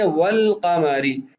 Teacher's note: لام تعریف کے بعد قاف ہے تو اس لیے لام تعریف کو قاف کی جنس میں تبدیل کر کے ادغام نہیں کیا گیا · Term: قمری حروف